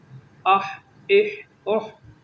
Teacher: حمزہ ہا زیر اح، حمزہ ہا پیش اح، اح اح اح، یہ حروف حلقی میں سے ہا ہے جو حلق کے درمیان سے ادا ہوگا